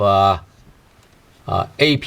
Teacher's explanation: in Cantonese, we don't pronounce the ending sound of the P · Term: glottal stop